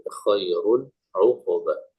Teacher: Izhar nunnya, tanwinnya jelas, nun bunyi nun di akhir.